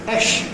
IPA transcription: ʃ